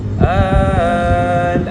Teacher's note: Kadar bacaan dia kita baca dengan kadar 6 harakat tanpa idgham. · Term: mat lazim kalimi muhaffaf